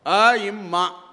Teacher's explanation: இப்போ அம்மா என்றால் அ குறில், அதுக்கு ஒரு மாத்திரை. இம் அதற்கு அரை மாத்திரை. மா என்கிற நெடிலுக்கு 2 மாத்திரை. இந்த 3.5 மாத்திரை ஒலிப்போடு அம்மா என்கிற சொல்லை உச்சரித்தால் அது இயற்றமிழ்.